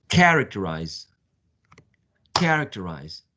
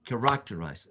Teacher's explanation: or correct arise is not going to be the pronunciation but the first syllable should be the the louder one